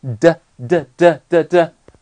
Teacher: 发的的时候你的舌头在哪？又是那个地方，叫舌尖抵住上齿龈